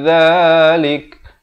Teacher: Terus masuk duna dhalik, dha di hujung lidah, dhalik, dan diwaqafkan, diberikan bunyi angin hamas di situ.